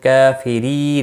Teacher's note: رو زیر کی وجہ سے باریک ہوگا، اور نون وقف کی صورت میں نون ساکن پڑھا جائے گا، وقف بالاسکان ہوگا۔ · کافری ری یا مدہ ہے، 1 الف کے برابر کھینچ کر پڑھیں گے